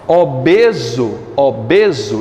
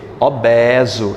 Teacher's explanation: obeso eu digo de forma fechada lá em Portugal ele dizia o quê obeso é de forma aberta